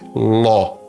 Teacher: A palavra é law. É um O aberto. Um acento agudo ainda.